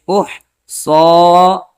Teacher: یہ بڑی ہا ہے، اس ہا کو گلے کے بیچ والے حصے سے ادا کرتے ہیں